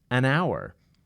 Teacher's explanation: with a consonant but has a vowel sound like an hour the word hour is spelled with an H but the H is not pronounced